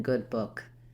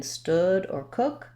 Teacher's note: It's a high back rounded lax vowel, and the symbol for it is this uppercase U with the little extra symbols on the top. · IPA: ʊ